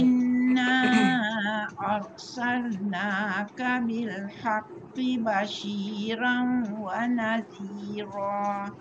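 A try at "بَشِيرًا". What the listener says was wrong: Bashiran, roh tebal dulu baru masuk dengar. Cuma Bashirong tadi tu dengungkan. Cuma Bashirong. Dia jadi Bashirong. Dia bukan Rong, dia Rong Ro.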